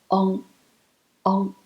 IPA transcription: ŋ